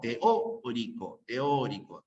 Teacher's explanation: la fuerza de voz está en la o